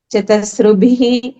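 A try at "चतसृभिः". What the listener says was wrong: Chatasr. It is not ru, it is r. R. The swara r.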